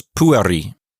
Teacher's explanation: Notice I'm putting the accent on the first syllable. It's not pueri, because that E is not long, and it's not in a closed syllable.